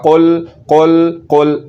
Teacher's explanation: تو اب اس حرف کو پڑھتے ہوئے ایک تو میں زبان کی جڑ کو تالو کی طرف بلند کر رہا ہوں اور دوسرے نمبر پر زبان کی جڑ کو تالو کے نرم حصے کے ساتھ لگا رہا ہوں، تو پھر یہ لفظ صحیح پڑھا جا رہا ہے